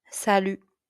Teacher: u is the tricky one with rounded lips and tongue forward